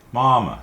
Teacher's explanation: First one is first tone, which is a high, even pitch. The second one's neutral tone.